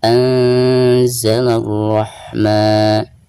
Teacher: Anzalar rahman, alif lam syamsiyah ya, karena tidak ada tanda sukun di atasnya. Jadi dari bacaan la langsung ke ro ya, ro tafkhim. Anzalar rahman, ketika membaca maknya dipanjangkan 2 harokat karena dihukumi mad tabi'i.